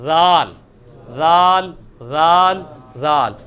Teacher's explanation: اس کو نرمی سے نکالنا ہے، اسی مخرج سے نکلے گا جہاں سے سا نکلا ہے